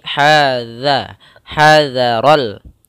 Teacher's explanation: Ha makhrajnya adalah di tengah lidah, di tengah tenggorokan kita. Ha kita keluarkan dan tidak boleh masuk hidung. Za tipis. Hadza yaitu ujung lidah kita menempelkan dengan gigi seri.